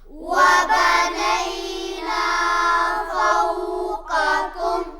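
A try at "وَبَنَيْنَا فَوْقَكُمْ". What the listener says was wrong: وبنینا یہ غلط ہے، آواز ناک میں نہیں جانی چاہیے۔ وبنینا فوقکم، قاف کو موٹا ادا کیجئے۔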